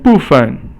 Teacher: Now 部 is fourth tone and 分 is 轻 声.